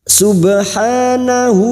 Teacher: Alif kecil di atas atau fathah berdiri dua harakat kita panjangkan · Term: Mad thaii